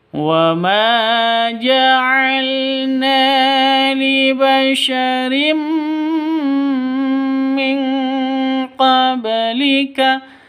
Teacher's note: Di sini ada tanwin bertemu dengan mim. Cara bacanya masuk ke mim disertai dengung karena bacaan idgham bighunah.